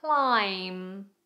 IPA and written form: klaɪm (Climb)